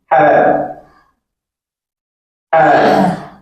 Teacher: to produce this sound, you use your epiglottis